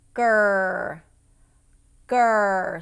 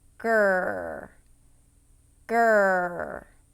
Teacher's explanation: So if this were my tongue in my mouth, gur, gur. So my tongue tip is down and the back of my tongue is touching the roof of my mouth.